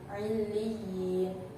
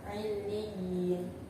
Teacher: Pengertiannya, apabila ada mad yang didahului dengan huruf yang bertasydid dan berharokat kasroh, maka cara bacanya panjang. Panjangnya satu alif atau dua harakat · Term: mad tamkin